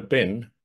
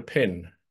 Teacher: what we call a voice consonant, a b. Okay, switch off the voice, and you've got a p. You've made the difference between a bin and a pin.